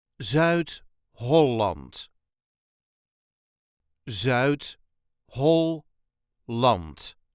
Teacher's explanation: there is a very slight emphasis on the first syllable of the second word